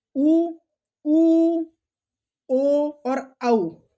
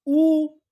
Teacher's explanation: जैसे ऊ, आप यदि ऊ का उच्चारण करेंगे तो आपके होठ कैसे हो जाएंगे, गोल हो जाएंगे। तो ऊ, ओ और औ, तो इनका उच्चारण करते समय आपके जो होठ हैं, ओष्ठ हैं, वो वृत्त यानी गोल हो जाते हैं, इसलिए इनको क्या कहा जाता है, वृत्ताकार स्वर।